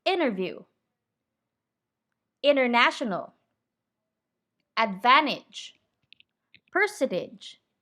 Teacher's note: the letters t and n are so close in the mouth that the t can disappear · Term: t is silent